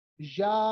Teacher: मैंने या को एक अलिफ से ज्यादा लंबा किया, मैंने इसको 3 या 4 अलिफ की तरह लंबा किया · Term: मद फरई